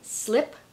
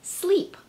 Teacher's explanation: we have the sound I that gets commonly mispronounced as an E